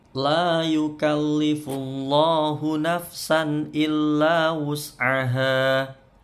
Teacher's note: La panjang dua harokat, matobi'i.